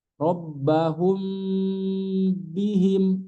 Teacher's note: pas ngucapin bnya itu di tekan rbahum bihim karena ba memiliki sifat syiddah